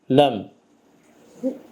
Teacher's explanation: dilin ucunu ön yan kəsici dişlərin kökünə toxundurmaqla olur. Ləm, ləm hərfi ordan çıxır.